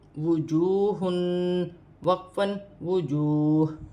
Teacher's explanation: وقف کی صورت میں دو پیش کی تنوین گر جائے گی اور ہا ساکن ہو جائے گی